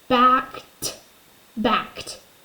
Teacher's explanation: K, k. Well, if I put my hand on my throat, is unvoiced. So ed should be unvoiced.